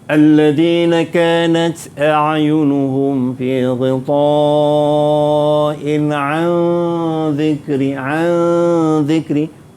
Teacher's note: Nun mati bertemu dengan zal. Dua harakat kena dengung.